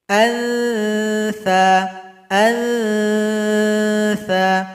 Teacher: Berikutnya huruf tha, ujung lidah dengan ujung gigi seperti tergigit.